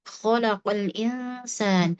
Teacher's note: Kemudian khalaqo di sini ko harus ditunaikan sifat istilnya dan makhrajnya betul-betul ada gesekan di pangkal lidah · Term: sifat isti'la'nya